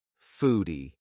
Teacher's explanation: f sound front teeth bottom lip